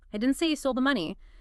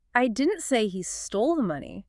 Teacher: But what if you take your pitch, spike it high up on the keyboard, and heavily stress the word he